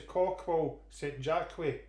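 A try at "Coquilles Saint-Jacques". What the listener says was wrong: We don't really pronounce the L's. It's coquine. Coquine. Saint-Jacques.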